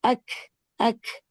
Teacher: और जिसको हम उर्दू में जो खा की आवाज है अक अक अक बहुत एग्जाजरेशन के साथ तो नहीं कि बहुत ही आप एयर रिलीज कर दे लेकिन वो जो थोड़ी सी एयर रिलीज है वो काफ के साथ की जाती है ताकि उसकी आवाज अदा हो। तो कौफ की आवाज की अदायगी के लिए कलकला करते हैं। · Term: हमस